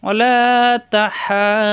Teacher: কণ্ঠনালীতে চাপ দিয়ে চার আলিফ টানতে হবে। চার আলিফ টেনে এসে এই দদের সাথে মিলবে।